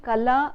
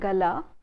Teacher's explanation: they shade into one another, the sound ka and ga.